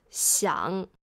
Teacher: 想 has the third tone. It goes down and up.